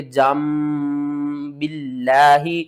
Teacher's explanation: نون کی آواز کو میم کی آواز میں بدل دینا ہے۔ یہاں پر نون ہے نا تو اس کو ہم نے میم میں بدل دینا ہے، ٹھیک ہے نا۔